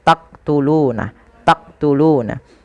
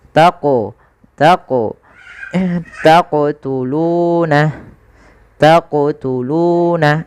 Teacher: Qalqalah adalah bacaan memantul jadi ketika melafalkan huruf q itu ketika sukun dipantulkan